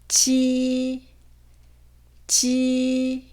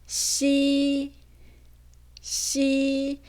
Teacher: 네, 먼저 설면 전음인데요. 설면 전음이라는 건 설면, 즉 혀의 앞부분이 입천장 쪽에 붙었다가 떨어지거나 가까이 되면서 발음을 하는 거예요